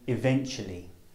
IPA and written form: ɪˈventʆuəli (eventually)